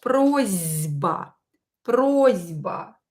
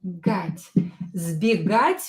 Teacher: Here you can hear that I pronounce S as Z.